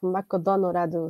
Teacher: they adapted the word McDonald's they say something like Mako donorado something like that because they don't have the l sound